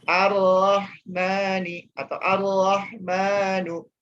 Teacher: karena bertemu dengan huruf ro, ya, bertemu dengan huruf ro, maka hurufnya melebur, langsung dibacanya langsung ke huruf ro.